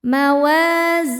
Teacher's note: Karena ada alif sebelumnya fathah dibacanya panjang dua harakat. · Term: mad thobi